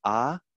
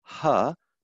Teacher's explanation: the only difference between ah and huh, the voiceless H, is the presence or absence of voicing. Assuming that the tongue makes no other changes There is no other change in the vocal tract filter.